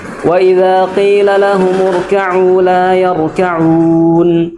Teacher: Ro-nya yang pertama tebal, yang kedua juga tebal.